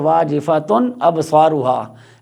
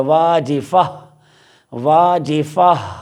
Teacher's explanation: لیکن جب ہم وقف کریں گے تو پھر ہم اس گول والی تا کو یہاں پہ دیکھ کے ہا ساکن سے بدل دیا، واجفہ، واجفہ، ہا کی آواز بھی آئے گی اور وہ ساکن ہوگا